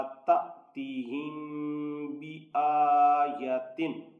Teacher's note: اسی طرح میم ساکن کے بعد با ہے، اس لیے یہاں میم پہ اخفاء شفوی ہوگا یعنی غنہ ہوگا۔ اس کو پڑھا جائے گا تأتیہم بآیتن۔